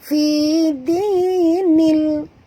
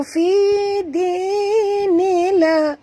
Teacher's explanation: Bunyikan lam yang mati ni dengan tongkatkan lidah ke langit. Fi dinil, jangan baca fi dinila.